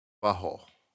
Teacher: this person pronounced butthole without bringing their teeth together to say a t. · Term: glottal stop